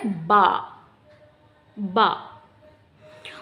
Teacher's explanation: दोनों होठों के तरी वाले हिस्से से मिलकर अदा होता है बा